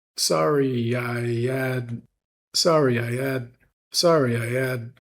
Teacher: So we're dropping the H in the word had. And if we're speaking really fast, then we're going to kind of almost meld all three of those vowels together.